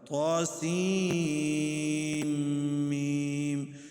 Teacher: سین کو میم میں ادغام کرنا ہے، اس کو مکس کرنا ہے